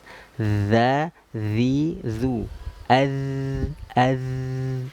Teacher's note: Makhrajnya ujung lidah sedikit keluar menyentuhnya ke gigi seri atas. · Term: huruf zal